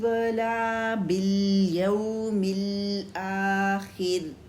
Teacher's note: اور ولا بالیوم الآخر، یہاں پہ خا تو موٹا لکھے، را باریک ہے کیونکہ را ساکن ہے اور اس سے پہلے زیر ہے، تو را کو باریک ادا کریں گے وقف میں